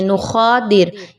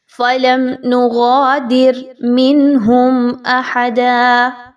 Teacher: نغادر، اب یہاں پہ خواہ کی آواز نہیں آنی چاہیے، نخادر اس طرح کی آواز نہیں ہو بلکہ غین ہے تو غین کی ہی ادائیگی رکھیے.